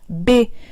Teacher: se pronuncia chocando los dos labios juntos